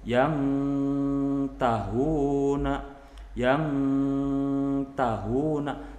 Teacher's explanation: tetap samar tapi tingkat kesamarannya itu lebih rendah karena makhrajnya berdekatan. Itu pengertian dari ikhfa akrob.